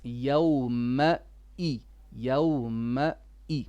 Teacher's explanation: One thing, don't merge your ma and your e. You're saying yawmai, mai.